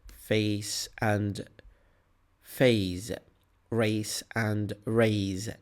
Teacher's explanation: If you listen carefully, you will hear S in the first word of each pair and Z in the second.